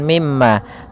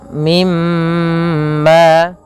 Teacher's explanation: menahan suara mimnya, suara emnya sepanjang 2 harakat sebagaimana ketika kita menahan huruf nun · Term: gunnah